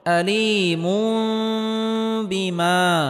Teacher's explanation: তানবিনকে ছোট মিম দ্বারা পরিবর্তন করে পড়তে হবে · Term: ইকলাব গুন্নাহ